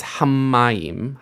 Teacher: In standard Hebrew pronunciation, we don't make the double consonants anymore.